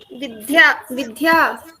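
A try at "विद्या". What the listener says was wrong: No dha. Alpa prana. Vidya.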